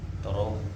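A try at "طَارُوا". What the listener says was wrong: Toru. Toru. Karena wow ketemunya sama doma. Jadinya toru. Aslinya toro kan fathah.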